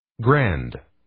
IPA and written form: ɡrænd (Grande)